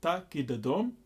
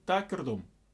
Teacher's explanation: I'm slightly rolling the tongue instead of the d.